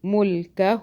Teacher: ہا الٹا پیش ہو کھینچتے ہیں ایک الف کے برابر